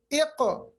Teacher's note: जब क़ाफ साकिन हो इसकी आवाज रुकती नहीं बल्कि रिबाउंड आती है। जैसे आपने देखा मैंने पढ़ा इक़, मैंने इक़ नहीं पढ़ा, इक़ यानी वापस आवाज लाना, इसको हम कहते हैं कलकला।